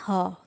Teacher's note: काकल्य वर्ण वह होते हैं, ऐसे व्यंजन होते हैं जिनका उच्चारण प्रमुख रूप से कंठ द्वार के प्रयोग से किया जाता है।